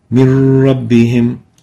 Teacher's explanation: But we pronounce it as if there is no noon. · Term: idgham